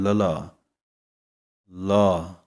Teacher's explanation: ਜਿਵੇਂ ਜੀਭ ਨੂੰ ਪੁੱਠੀ ਕਰਨਾ ਵੀ ਕਹਿੰਦੇ ਹਨ ਜੀਭ ਪੁੱਠੀ ਹੋ ਜਾਂਦੀ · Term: ਲੇ ਪੈਰ ਬਿੰਦੀ